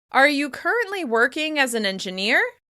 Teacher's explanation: your pitch rises to its highest level on the most important word of the sentence and continues to climb. Depending on which syllable or which word is stressed, this steep rise can happen within the same syllable, or you may have a little more time to climb up to the end. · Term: Rising intonation